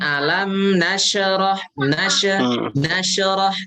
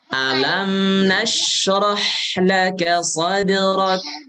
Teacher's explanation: Huruf shin jangan dipantulkan.